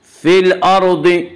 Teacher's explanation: یہاں را ساکن سے پہلے زبر ہے اس لیے را کو پر پڑھیں گے